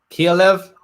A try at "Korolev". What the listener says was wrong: It was Korolev. Not the Koral. I think you said Kirilev or something like that. It's only they put an extra I in there. Mispronunciation.